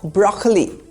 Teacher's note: There is no second O sound, just broccoli. The emphasis is on the first syllable, broccoli. In American English, even the first O sound is replaced by an R sound, broccoli, like Barack Obama.